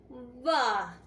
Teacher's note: य और व को अर्ध स्वर व्यंजन कहा जाता है क्योंकि इनकी ध्वनि जो है बिना किसी रुकावट के बाहर निकलती है।